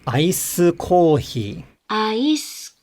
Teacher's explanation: it's going to result in a low high low pitch accent pattern